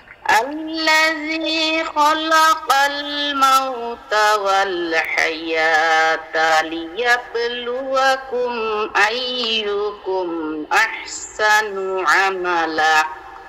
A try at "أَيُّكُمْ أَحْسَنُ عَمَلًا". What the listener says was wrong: এই লায়ের মধ্যে টান দিব কেডায়? আপনার নানায়। আইয়ুকুম আহসানু আমালা।